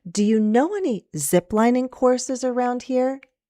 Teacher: So I'm going to go down a little on zip again, and then rise. · We're going to stress the main verb know.